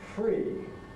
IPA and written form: friː (free)